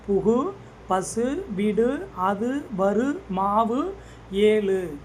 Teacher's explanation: ஓசை குறையாமல் ஒரு மாத்திரை அளவுக்கு முழுமையாக ஒலித்து வந்தால் அதுதான் முற்றியல் உகரம்.